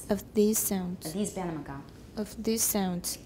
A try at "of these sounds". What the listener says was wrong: You're still making it higher.